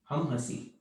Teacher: So there is a nasalized sound here. E and then N.